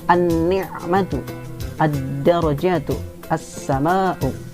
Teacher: Cara bacanya adalah dileburkan, dimasukkan, karena ini sifat lain daripada alif lam samsiah adalah idgham syamsiah. An-ni'matu, ad-darajatu, as-sama'u.